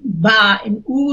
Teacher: the ba and u sounds are produced by the lip that has this rounding shape